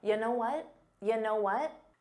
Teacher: you know what may have been difficult to hear because it becomes unstressed